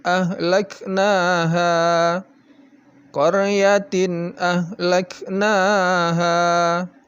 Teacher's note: jadi in dibaca jelas kemudian hanya juga jelas jadi tidak boleh didengungkan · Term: izhar